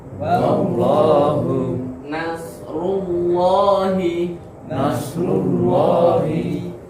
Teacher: Naik ke atas lidahnya. Allah, belakangnya diangkat juga. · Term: Tafkhim